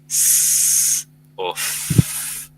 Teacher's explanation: son consonantes que tienen fricción al pronunciarlas y que sobre todo se pueden pronunciar por una duración de tiempo bastante más larga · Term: fricativas